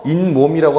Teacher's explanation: 시옷이 디귿으로 바뀌고 디귿이 뒤에 미음 때문에 비음화가 생기기 때문이죠